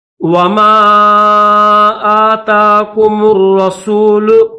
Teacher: रा के ऊपर तशदीद है तो मीम को रा के साथ मिलाएंगे